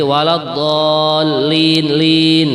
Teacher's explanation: itu kalau di dalam tajwid boleh dibaca 2 harokat boleh, dibaca 4 harokat juga boleh, dibaca 6 harokat juga boleh. Kalau dalam tajwidnya dikatakan mad arid lisukun ya.